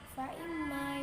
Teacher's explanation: terdapat gunnah musyaddadah karena mim yang bertasydid